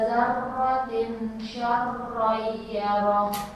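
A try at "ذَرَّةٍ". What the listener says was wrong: Diikhfakan dua harakat, dzarratin. Jadi n-nya jangan kedengeran n. Dzarratin sa. Jantin.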